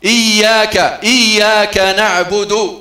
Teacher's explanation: إظهار الهمز في حرف الألف، إي ما تقولش آ، إي يا مع تشديد الياء